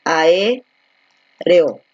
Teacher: Por lo tanto, al momento de hacer la separación, la voy a hacer de la siguiente manera, ¿no? Porque abierta más abierta, hiato, y los hiatos siempre se separan